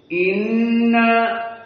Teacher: nun musyaddadah gunnah dari hidung khaisum